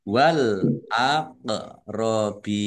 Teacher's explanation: bacaan qolqalah dibaca memantul ditampakkan pantulannya